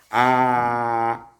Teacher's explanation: Y lo hago bien, así exageradamente para que se note más, y digo A, ¿sí? Lo que hago es bajar la lengua bien, bien abajo y a una distancia importante del paladar. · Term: la A